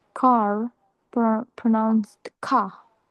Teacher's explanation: The R at the end of the words is usually not pronounced. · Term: nonrotic R